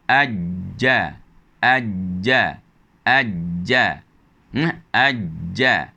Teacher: Bila mana gigi kita berada dalam keadaan begitu, tengah lidah ini akan bertemu, akan yang setara dengannya, maka bagi huruf jim, tengah lidah akan menyentuh bahagian yang setara dengan tempat letaknya huruf jim itu di bahagian atas, maka akan terhasillah ajja, ajja, ajja, ajja.